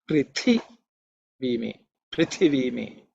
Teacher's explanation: The second letter is Thi. It is the second letter in the tha varga, so it has to be aspirated.